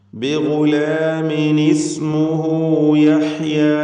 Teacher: ഇസ്മുഹു എന്നതിലെ ളമീറിനെ 2 ഹറക്കത്തിൻ്റെ അളവിൽ മദ്ദുസ്സിലത്തി സുഗ്റ നൽകി ദീർഘിപ്പിക്കുക